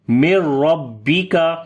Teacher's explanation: میم کو ڈائریکٹ را کے ساتھ پڑھیں گے، را کے اوپر زبر ہے، موٹا پڑھیں گے را کو۔ مر ربی کا، کاف کو باریک پڑھیں گے۔